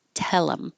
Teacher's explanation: we get rid of the H and then we connect the L to the I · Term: H deletion